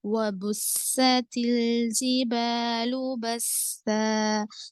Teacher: سیٹی وزل کی آواز آئے گی · آواز آئے گی، واو پہ حرکت، سین پہ با پہ حرکت، سین پہ شدہ ہے، سختی سے پڑھیں گے لیکن آواز میں فرق نہیں آنے دیں گے